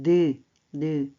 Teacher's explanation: 혀끝이 잇몸에 닿았다 떨어집니다. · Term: 비음